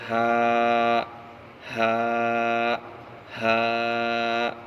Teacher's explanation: ہا کا مخرج حلق کا آخری یعنی سینے کی طرف والا حصہ سے ہا ادا ہوتا ہے، جیسے ہا ہا ہا۔